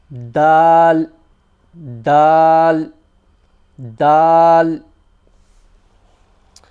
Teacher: the tip of your tongue against the back of the top teeth where the gums and the teeth meet